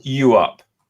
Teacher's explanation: There's a glottal stop in the middle.